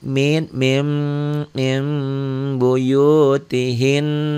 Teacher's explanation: Nunnya bunyi nun matinya berubah menjadi bunyi mim mati. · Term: iqlab, iklab